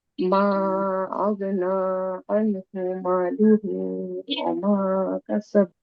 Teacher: মা লুহু মিমে টান হয় না আপু